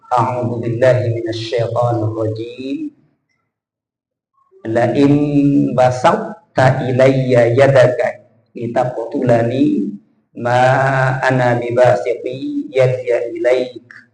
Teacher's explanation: Huruf th itu sifatnya jahar dan sifatnya lebih kuat. Sementara huruf ta itu salah satu sifatnya hames. Huruf th dengan huruf ta thnya itu lebih kuat. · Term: idgham naqis